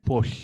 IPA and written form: pɔɬ (Paul)